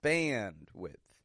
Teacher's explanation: Notice how the an stretches out in band. Bandwidth. And again, the first syllable is stressed.